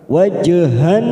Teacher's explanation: waj sukun qalqalah sugra kita pantulkan wajhan nahari masuk pada lam syamsiyah ada huruf nun yang bertasdid kita fokus pada huruf nun yang bertasdid hanna wajhannaha kita ketuk namanya bacaan ghunah wajhan Han nahari.